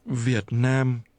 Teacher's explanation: this is pronounced with low falling broken and mid-level tones